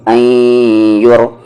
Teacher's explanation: نون ساکن کے بعد یا ہے، ادغام وتھ غنہ